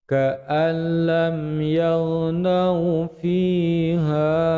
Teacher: Nun sukun dimasukkan pada lam, disebut dengan idgham bila gunnah.